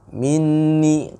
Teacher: tahan dulu 2 harokat. Ya, wajib guna. Minni, ya, 2 harokat.